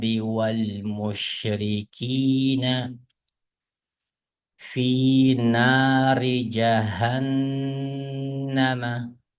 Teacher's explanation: Bu yerda nunni ixfa, ya'ni g'unnilik ixfa deymiz. Buni to'xtab o'qiymiz.